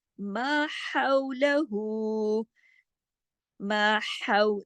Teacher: حو گلے سے پڑھنا ہے، آواز میں سانس چلے گی